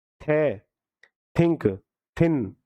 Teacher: तो डेंटल है जीभ और ऊपरी दांत है